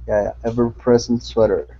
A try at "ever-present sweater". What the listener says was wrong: There you go. Good.